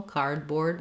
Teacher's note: is an example of a compound word where in these words we stress both syllables but the primary stress is going to be on the first syllable · so it's not cardboard we don't reduce that second syllable cardboard we say clear vowel in both but we have a little more length and stress on the first syllable